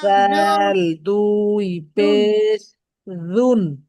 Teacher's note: জাল জিহ্বার আগা উপরের দুই দাঁতের সাথে লাগে, যেখান থেকে থা উচ্চারিত হয়েছে, যেখান থেকে থা উচ্চারণ করছেন সেইখান থেকে জাল উচ্চারণ হবে নরম করে।